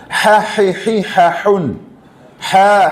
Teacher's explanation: അഹയാണ് തൊണ്ടയുടെ മധ്യഭാഗം